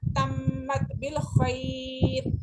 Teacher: یا لین ہے اس کو ہم نے جب کمپلیٹ پڑھا تو جلدی پڑھا جب وقف کیا تو ہم نے اس کو ایک فنگر کھینچ کے پڑھا ہے